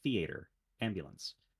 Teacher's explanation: my dialect, we tend to prefer initial stress